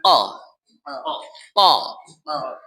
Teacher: কফের উচ্চারণ জিহ্বার গোড়ার থেকে আনা দরকার।